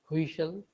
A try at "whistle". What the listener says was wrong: Not whistle, whistle. Remove the H.